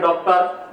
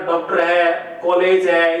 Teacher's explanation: डॉक्टर वाला जो ओ है, ये आ और ओ के मध्य की ध्वनि है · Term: आगत वर्ण